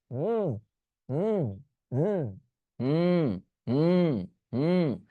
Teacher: Just ম সাউন্ডটা create করার চেষ্টা করেন নাক থেকে। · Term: নাসিক্য বর্ণ